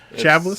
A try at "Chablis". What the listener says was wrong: It sounds like a French word. You wouldn't pronounce the S at the end.